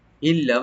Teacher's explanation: নুন সাকিনের পর যেহেতু লাম আসছে এখানে একদম উইদাউট গুণা হবে